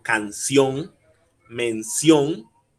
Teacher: es la e otro ejemplo podría ser por ejemplo canción mención el acento estaría en la o en la última o y luego viene una n canción mención todas las consonantes que